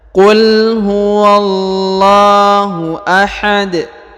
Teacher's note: huruf terakhir pada ujung bacaan berharakat UN tapi karena berhenti maka dia dibaca sukun atau disukunkan